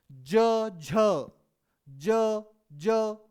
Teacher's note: जब ज का उच्चारण करते हैं तो आपके आपके मुंह में एक ऑटोमेटिकली कंपन महसूस हो जाता है आपको।